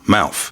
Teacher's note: th at the end of a word can turn into an f.